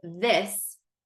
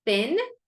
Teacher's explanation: they are two distinct sounds because one is voiced and one is not voiced